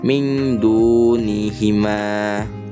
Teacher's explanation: cara baca ikhfa ini adalah dari dalam rongga hidung sampai dengan terlihat samar, atau bisa juga menjadi suara eng atau eng.